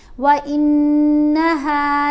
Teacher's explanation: नून के ऊपर गुन्ना करेंगे, यानी एक हरकत के बराबर ठहर कर आवाज़ नाक में ले जाकर पढ़ी जाएगी।